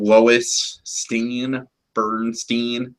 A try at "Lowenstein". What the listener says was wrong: No, it's Lowenstein, not Lois. Yeah, like Lowenbrow. Remember, like Peter's fake name.